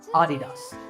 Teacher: the correct pronunciation is with the stress on the first syllable